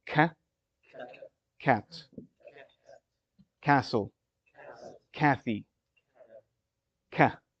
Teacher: You've got your hard palate and your soft palate. For ka, the tongue hits further in front.